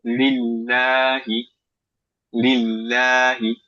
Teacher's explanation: লাটা একটু লম্বা করে এবং লা হালকা